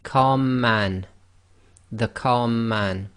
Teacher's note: the two M's sort of merge together and you end up holding the two M's for a little bit longer and effectively not taking a pause between the two letters the